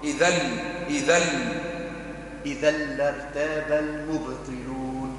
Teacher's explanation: إذا إدغام يسموه إدغام بلا غنى